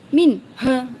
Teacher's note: Nun sukun bertemu ha. Ini bacaan izhar dibaca jelas, tetapi tidak menampakkan yang keras gitu ya.